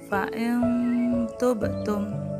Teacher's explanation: memberikan contoh bacaan Ikhfa yang pertama adalah kwebek Tum itu ada huruf nun sukun bertemu dengan huruf Ta Maka huruf nun sukun nya dibaca samar atau dengung